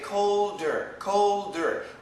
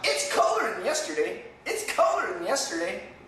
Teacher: than yesterday colder colder they will have a D sound but some Americans won't have a D sound it's colder than yesterday it's colder than yesterday there's no D